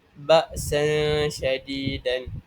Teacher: Dan cara bacanya ialah nun sakinah atau tanwin ini dibaca sama-sama antara izhar dan idgham. Dan caranya lidah diangkat tetapi tidak menyentuh lelangit, berserta dengung 2 harakat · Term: ikhfa hakiki